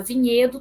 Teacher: Eu tenho uma vogal que é nasal e ela é pré-tônica, ou seja, ela é átona.